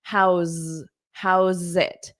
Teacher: How's it? Okay, so we take this S, but it sounds like a Z, and then you connect it to the it